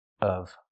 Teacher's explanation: you can pronounce the v sound. But keep the vowel short and closed.